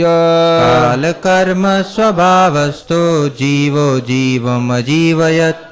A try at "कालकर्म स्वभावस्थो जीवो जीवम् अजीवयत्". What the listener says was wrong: Very good.